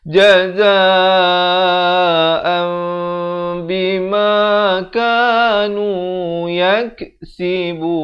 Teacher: ditukarkan daripada bunyi nun itu kepada bunyi mim, daripada an jadi am. Tapi jangan lupa panjangkan 2 harakat.